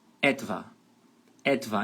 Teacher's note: a sílaba tônica é no comecinho, em cima da letra E